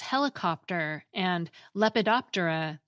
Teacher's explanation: What’s happened is that the PT cluster has been split apart.